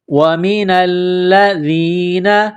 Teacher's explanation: لام مشدد ہے تو لام کو دبانا ہے، سختی کرنی ہے، ذال کو نرم کرنا ہے، زبان باہر نکالیں گے ذال کو پڑھتے وقت · نون کو لام کے ساتھ ملانا ہے، لام مشدد ہے تو لام کو دبانا ہے، سختی کرنی ہے